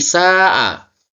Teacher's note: Ada mat tabi'i bertemu hamzah dalam satu kata. Mat wajib mutasil, ini panjangnya sampai 2,5 alif atau 5 harakat.